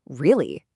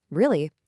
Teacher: with a highly exaggerated rising tone, you instantly hear surprise, right? Or you know I'm asking a question.